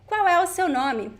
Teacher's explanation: We don't pronounce the L sound at the end of words. We do pronounce the L sound when it is together with a vowel, right?